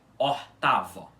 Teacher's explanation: A vogal tônica dessa palavra tem que ser o A. E esse O aspirado fica átono, fica menos forte, fica fraco, ok? Então essa é a pronúncia correta da palavra oitavo em balborano, que é ortavo, certo?